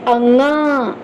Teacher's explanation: अनुस्वार का उच्चारण होता है नासिका से हमारी नाक से बोलिए अंग नाक से हवा निकलती है ठीक तो नासिका से